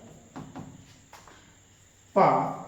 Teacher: आपकी जीभ जो है कहीं नहीं हिलने वाली है, आपके दांत कहीं नहीं हिलने वाले हैं, आपका गला कोई टेंशन नहीं ले रहा है, सीधे हवा फेंक रहा है, ओंठों से आवाज आ रही है, ओंठ से आवाज आ रही है आपकी।